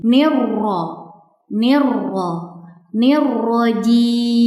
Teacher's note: huruf ro bertasydid yang dibaca tafhim atau tebal karena huruf rnya berharakat fathah